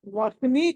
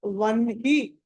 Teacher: వ తర్వాత న రావాలి, తర్వాత హి రావాలి.